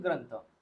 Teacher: अनुस्वारच्या पुढे थ आलेला आहे आणि थ हा त वर्गातील वर्ण आहे त्यामुळे जो अनुस्वार आहे हा त वर्गातील अनुनासिक वर्णांनी रिप्लेस होईल म्हणजेच न नी रिप्लेस होईल तर आन्सर मध्ये येईल ग्रंथ त्यानंतर